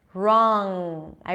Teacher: I bring the back of the tongue up and that's the ng